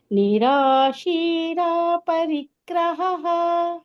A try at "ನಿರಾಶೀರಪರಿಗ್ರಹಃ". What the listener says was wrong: ರಪರಿ ಅಂತ ಒಟ್ಟಿಗೆ ಬರಬೇಕು